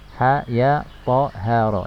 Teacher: Cara membacanya dengan dipanjangkan 2 harokat. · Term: mad tabi'i harfi